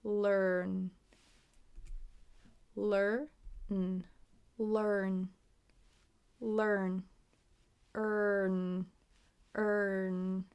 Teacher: So the tongue is up for 'l' down for 'er' and back up for the 'n'